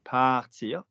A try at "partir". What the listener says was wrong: Don't do an Italian r, do a French r. Partir.